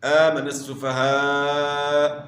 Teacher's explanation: آمن السفہاء یہاں جو ہے نا 3 سے 4 الف آپ نے مد کرنا ہے۔ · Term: مد واجب